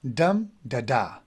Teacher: Here we have example of dactyl, which is dum da da. Dum, the first one would be a stress one and the last 2 would be unstressed.